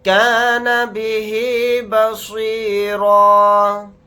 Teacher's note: را کو یہاں پر موٹا یعنی پر پڑھیں گے. · حالت وقف میں را الف کے ساتھ ایک زبر لگا کر پڑھیں گے, دو زبر نہیں پڑھے جائیں گے